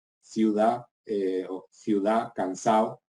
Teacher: pérdida de la D